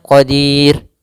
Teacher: Yang di mana mad arid disukun yang asalnya adalah mad tabi'i. Yaitu maka dirnya kita boleh memanjangkan 2 harakat, boleh pula 4 harakat, boleh pula 6 harakat. Maka boleh kita baca misalnya qadir 2 harakat, qadir 4 harakat, atau yang 6 harakat pun. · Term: mad arid lis sukun